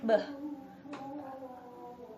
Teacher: Place of articulation bilabial, manner of articulation plosive, and b include two voiced.